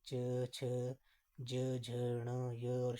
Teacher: जब हम इनका उच्चारण कर रहे हैं तो तालु से इनका उच्चारण हो रहा है। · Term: तालव्य व्यंजन